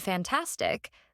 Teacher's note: in the word fantastic the stress lands on the second syllable because it ends in ic